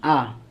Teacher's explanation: विवृत मतलब जहाँ पूरा खुल जाता है, जैसे आ पूरा खुल जाता है